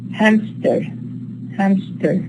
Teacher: we don't have a p but what we actually produce is a p after the ma hamster hamster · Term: stop insertion